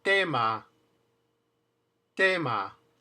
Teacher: if you put an s before the word, like the word stay, stop, still, there's no puff of air